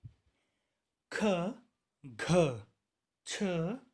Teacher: महाप्राण वे व्यंजन वर्ण होते हैं जिनके उच्चारण की अवधि में अधिक मात्रा में श्वास बाहर निकलती है, या कह लीजिए इस प्रकार के व्यंजन वर्णों के उच्चारण में निकलने वाली वायु का वेग अधिक होता है, इसलिए इन्हें महाप्राण कहा गया है।